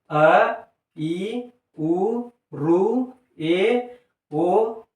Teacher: ಏಕಮಾತ್ರ ಕಾಲದಲ್ಲಿ ಉಚ್ಚಾರಣೆ ಮಾಡುವಂತಹ ಸ್ವರಗಳನ್ನ ನಾವು ಹೃಸ್ವ ಸ್ವರಗಳು ಅಂತ ಹೇಳಿ ಕರೀತೀವಿ